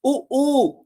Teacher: When we pronounce oo, oo, now you can observe from my mouth, the lips, they take a round shape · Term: rounded